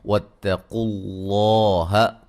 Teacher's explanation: لفظ اللہ کو خوب موٹا ادا کریں گے، اس سے پہلے حرف پر زبر ہے